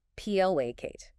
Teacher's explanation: P-L-A-cate. 2 syllables, stress on the first.